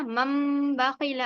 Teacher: तनवीन या नून साकिन के बाद बा आए तो नून को मीम से बदलकर गुन्ना और इख्फा के साथ पढ़ेंगे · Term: इखलाब